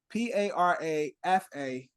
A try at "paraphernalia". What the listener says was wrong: No. No. No. There's no F